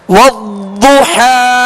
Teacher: ضاد کی ادائیگی میں زبان کی کروٹ اور اوپر کی 5 داڑھوں کی جڑ، یہ اس کا مخرج ہے، نکلنے کی جگہ.